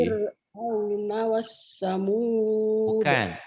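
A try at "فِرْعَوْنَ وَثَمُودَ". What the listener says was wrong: Bukan wassamud. Kalau wassamud ada tasdid. Wasamud. Wasamud.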